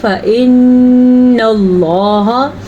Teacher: اگر لفظ اللہ سے پہلے زبر اور پیش ہو تو لفظ اللہ کو پر یعنی کہ موٹا کر کے پڑھا جاتا ہے